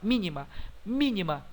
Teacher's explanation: mi é a anti penúltima então é outra proparoxítona